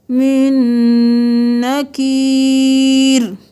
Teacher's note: اس نون ساکن کو چھوڑ کے نون جس پہ مشدد ہے، جس پہ تشدید ہے، اس کو پڑھیں گے، میم زیر نون من، من، نون زبرنا، من نکیر۔